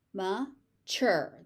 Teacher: The tu becomes a ch.